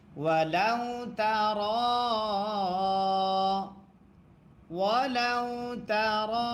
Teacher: মাদ্দে আসর বামে লম্বা হামজা যদি হয় তিন আলিফ টানতে হয় মাদ্দে মুনফাসিল তারে কয়